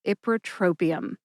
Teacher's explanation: Emphasize ip and tro. Tro gets the most emphasis.